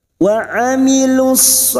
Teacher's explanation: huruf ain jangan samakan dengan hamzah, huruf ain yang memiliki sifat tawasud dan jahar. Wa amilus, masuk pada alif lam syamsiyah atau idgham syamsiyah.